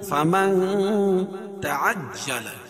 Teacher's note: فمن اخفا حقیقی، کیونکہ نون ساکن کے بعد حروف اخفا کے 15 حرفوں میں سے تا ہے تو یہاں ناک میں آواز کو چھپا کر پڑھیں گے